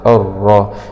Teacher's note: لام سكون شمسية مدغمة في الراء المشددة مع الفتح